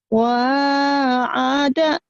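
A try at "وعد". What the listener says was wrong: Wa'ada, langsung ain ke dal jadi wa'ada lagi. Jangan terputus ya.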